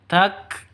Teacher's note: kafnya harus ada hemisnya harus ada nafasnya keluar